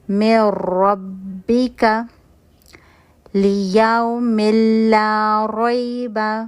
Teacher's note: نون کی لام یا را میں وداؤٹ غنہ، یعنی غنہ کے بغیر جو ہے وہ مرجنگ ہوگی، غنہ کی آواز نہیں آئے گی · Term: کمپلیٹ مرجنگ